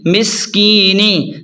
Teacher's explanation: مس، کاف یا زیر کی، مس کی، نون زیر نی، مسکینی، سین سیٹی کو واضح کریں اور یا مدہ کو تھوڑا سا کھینچ کر پڑھیں